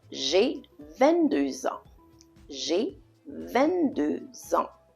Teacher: Notice I'm making la liaison here. I'm connecting 22 and ans.